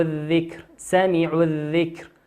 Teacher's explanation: لام ساكنة أتى بعدها حرف الذال، والذال من حروف اللام الشمسية ندغمها، لا نقول الذكر لكن نقول الذكر، الذكر.